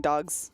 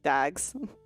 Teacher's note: we'll change the s into a z sound so then they match up